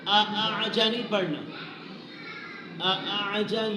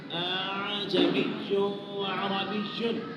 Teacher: اعجمی یعنی یہ حمزہ پہلا ہے نا، اس کو واضح پڑھیں گے، دوسرا جو حمزہ ہے اس کو واضح نہیں پڑھنا، اس کو نرم کر کے پڑھنا ہے، اس لیے اس کو تسہیل کہتے ہیں.